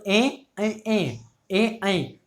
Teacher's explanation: देखो बोल के दे दो ए ए ए ए, तो आपकी जो जीभ है वो आपके कंठ और तालु यानी कि दोनों से इनकी आवाज़ निकल कर आ रही है, आपकी जीभ तालु से भी स्पर्श हो रही है और आवाज़ कंठ से भी आपकी निकल कर आ रही है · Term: कंठ तालव्य